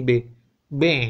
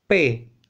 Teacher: dengungan B lebih terasa ketimbang P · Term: bunyi bersuara